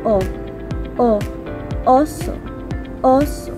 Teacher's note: Ang ayos ng dila sa letrang O ay gitna at ang bahagi ng dila ay likod. Kaya binibigkas ito ng O, oso, oso.